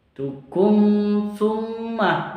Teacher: mim sukun bertemu atau berjumpa dengan sa disebut dengan izhar safawi. Bacanya jelas, tidak dibaca dengung.